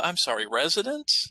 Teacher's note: do you see how my voice goes up like there's a question